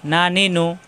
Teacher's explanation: নুন জিহ্বার আগা উপরে তালুতে লাগিয়ে উচ্চারণ